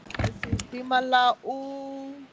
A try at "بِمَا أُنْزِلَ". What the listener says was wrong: There is no لَا here. There is no لَا here. بِمَا أُنْزِلَ